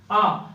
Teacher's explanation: आ बोलने पे जितना आपका मुख खुलेगा उतना किसी भी स्वर को बोलोगे तो मुख नहीं खुलेगा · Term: विपृत